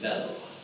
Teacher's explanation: Irish have a very clear L, they say bell.